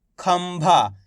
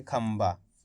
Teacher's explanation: इस तरीके से पढ़ेंगे, यानी कि आधा माँ का उच्चारण निकालेंगे